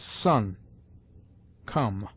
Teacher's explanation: The short O has sometimes the sound of close U